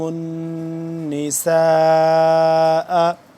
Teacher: سین الف مد زبر سا، 4 سے 5 الف کے برابر یہ مد لمبی ہوتی ہے · نون ہے یہاں پہ نون مشدد ہے، اس پہ غنہ کریں گے